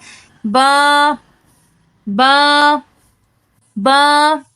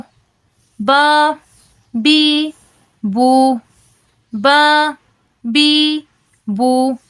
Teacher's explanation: जब दोनों होंठों का गीले वाला हिस्सा आपस में मिले तो हरफे बा अदा होता है गीले वाले हिस्से से मुराद होठों के अंदर वाला हिस्सा मुराद